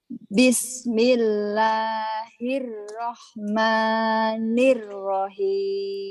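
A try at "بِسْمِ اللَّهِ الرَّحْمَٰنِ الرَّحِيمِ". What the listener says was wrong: Jadi ya, tadi ternyata ada yang aneh ya bismillahnya. Nah, terutama saat ro. Kayak orang barat. Orang barat kan R-nya gitu ya. Hil-Rahman, jangan Hil-Rahman. R. Bismillahirrahmanirrahim.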